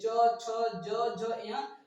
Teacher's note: च, छ, ज, झ, या सब का उच्चारण स्थान तालु है। क्या है, इन सभी वर्णों को जब हम बोलते हैं तो हमारा तालु स्पर्श करता है, इसलिए ये तालु वर्ण है, इसको हम तालु वर्ण कहते हैं।